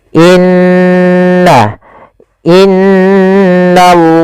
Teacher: Maka di sini kita masuk kepada ahkamul lamat, hukum-hukum berkenaan dengan huruf lam, yaitu hukum lam atau lam itu ada dua, lam tebal dan lam tipis. Nah, di sini kita membaca dengan lam tebal pada lafal Allah · Maka in maka n ditahan sepanjang dua harakat tidak langsung dibaca innallaha tapi ditahan dulu sepanjang dua harakat untuk menyempurnakan bacaan gunahnya. · Pada lafal innallaha di sini ada bacaan kita namakan dengan bacaan gunah pada lafal nun yang berharakat tasydid